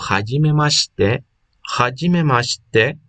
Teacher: Y aquí, en este shi, cuando nosotros lo pronunciamos en medio de dos sílabas o en medio de dos letras japonesas, pierde el sonido de la letra i. Entonces se va la i y se queda como hajime mashite, hajime mashite.